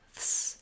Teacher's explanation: we have the th and the s sounds together at the end. So a voiceless th and an s sound. Ths. My tongue is out between my teeth, and then it pulls back for my S sound.